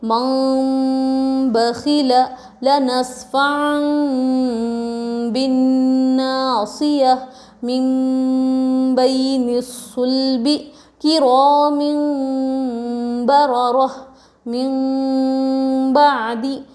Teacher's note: نون کو میم سے بدل کر پڑھیں گے، اس کو اقلاب کہتے ہیں